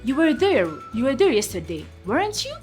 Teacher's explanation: you're not sure that the person was there, and that's where you use the rising intonation.